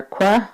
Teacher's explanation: like a regular k but your lips are rounded